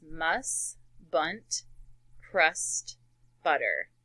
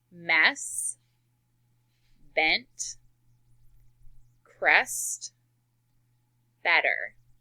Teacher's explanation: the words are the same except they change the vowel to that short E, which says eh.